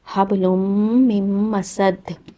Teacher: again یہاں نون ساکن تھا، نون ساکن اور تنوین کے احکامات جو ہوتے ہیں وہ سیم ہوتے ہیں، تو یہاں نون ساکن کے بعد میم آ گیا ہے، تو یہاں پر بھی آپ نے ادغام کرنا ہے، ادغام کامل بغنہ